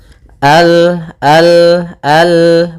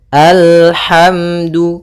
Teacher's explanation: Kalau dia kita namakan dengan hamzatul wasal kalau di tengah maka kita baca dengan al kemudian al hati-hati dalam lafal lam sempurnakan makhraj daripada lam ujung lidah naik apa melekat dengan langit-langit atas